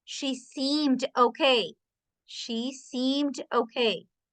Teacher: Suena como una D nomás, no suena la E. No suena la E.